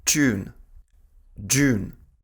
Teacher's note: А вот после т и д часто встречается yard coalescence. Там произносится ч и дж.